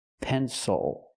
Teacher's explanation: why because the stress is not on the syllable before the L that's why it's not pronounced ill